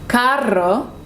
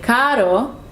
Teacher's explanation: If it's one R in the middle of a word, then it's just r sound, softer. So for example, carro is car, but if you say caro, means expensive.